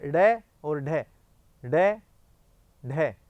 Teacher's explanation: जिनके उच्चारण में जीवा झटके से नीचे गिरती है, ऐसे लगता है जैसे जीभ को किसी ने फेंका हो। अब जीभ क्या है कि लुढ़कती हुई नीचे आती है, जैसे लगता है जैसे झटाक से शीघ्र गति से जीभ को किसी ने फेंका हो। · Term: उत्क्षिप्त